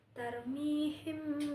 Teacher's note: Ada mad thobi'i karena kasrah diikuti ya sukun dibaca panjang dua harakat. · ada ikhfa syafawi karena mim mati bertemu dengan ba dibaca samar di bibir.